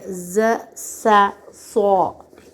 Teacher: ये सख्ती से अदा होते हैं और ऊपर नीचे के दांत जुड़ जाते हैं और ज़बान जो है यही ज़बान का सिरा निचले दांतों के पीछे आ लगता है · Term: हरूफ सफ़ीरिया